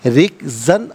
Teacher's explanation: را کے نیچے زیر، را کو باریک کر کے پڑھیں گے، وقف کی صورت میں رکزا پڑھیں گے کہ دو زبر کی تنوین وقف میں الف سے چینج ہو جاتی ہے۔